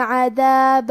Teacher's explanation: کلمت عذابہ میں حرف الدال کی ادائیگی زبان کے سر اور اوپر والے دانتوں کے اندرونی کناروں سے ہے